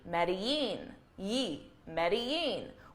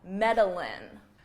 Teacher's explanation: the double L in Spanish is actually pronounced as a Y sound